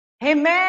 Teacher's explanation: Então, esse mé de remédio é a sílaba mais forte. Proparoxítona, a sílaba mais forte é a antepenúltima.